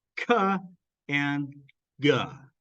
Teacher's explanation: And then ka and ga, these are velar plosives. The back of your tongue touches your velum, blocks the air, and then it pushes its way out, and we get a little puff.